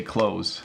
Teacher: Even though it has a TH in it, we just say close.